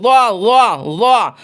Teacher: ज़ुबान की नोक ऊपर के सामने वाले दोनों दांतों की नोक से मिलकर ज़ा अदा होता है।